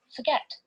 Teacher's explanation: the second syllable is stressed and it has one vowel in one syllable